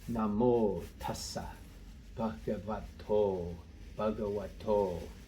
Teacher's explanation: And this BH, B, just a normal English B followed by a puff of air, a B. We call that an aspirated sound.